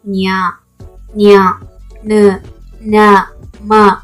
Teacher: ನಾವು ಮೂಗಿನ ಸಹಾಯದಿಂದ ಉಚ್ಚರಿಸಲಾಗುವ ವ್ಯಂಜನಗಳೇ ಅನುನಾಸಿಕಾಕ್ಷರಗಳು